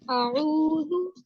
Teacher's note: जी आऊज़ु हमजा 1 finger count होगा और आइन पेश वाऊ, वाऊ से पहले पेश है, वाऊ साकिन है, तो इसे हम वाऊ मद्दा पढ़ेंगे और ये 2 फिंगर काउंट होगा। इसी तरह और ये आवाज हल्क से आएगी।